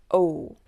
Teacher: And your mouth is wider horizontally. O is rounded. Your lips make a small circle like O.